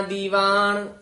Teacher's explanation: ਦੀਵਾਨ ਨਨੇ ਨਾਲ ਹੀ ਉਚਾਰਨ ਕਰਨਾ ਨਾਣਾ ਨਹੀਂ ਬੋਲਣਾ